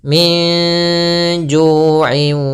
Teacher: nun sukun bertemu dengan huruf jim, jadi cara membacanya adalah dengan mengaburkannya di antara izhar dan idgham. Jadi bacaan ikhfa itu antara izhar dan idgham.